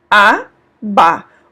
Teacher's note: o último a ele é um pouco mais alongado